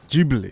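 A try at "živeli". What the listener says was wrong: Jibali with a V.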